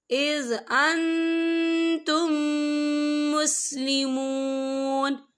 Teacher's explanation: أَيَأْمُرُكُمْ بِالْكُفْرِ بَعْدَ إِذْ أَنْتُمْ مُسْلِمُونَ، یہ دیکھیں اِذْ أَنْتُمْ یہاں میم ساکن ہے، میم ساکن کے بعد میم مشدد والا حروف آ رہا ہے، تو یہاں پر ادغام شفوی ہوگا، اور ہم پچھلے میم کو اگلے میم میں مدغم کریں گے اور ہم یہاں غنّہ بھی کریں گے